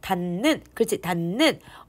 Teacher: 니은이 2번이나 발음이 돼요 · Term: 완전 동화